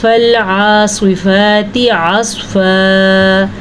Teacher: یہ سواد ساکن ہے اور اس سے پچھلے حرف کے اوپر زبر ہے تو یہ سواد بھی پر پڑھی جائے گی